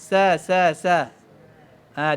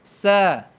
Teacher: Dia keluar angin daripada mulut. Sa, dia keluar safir, dia berdesiang.